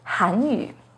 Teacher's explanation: The pinyin and tone for Hanyu has a second rising tone on Han